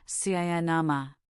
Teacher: In cinema, the last syllable ma is a schwa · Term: the schwa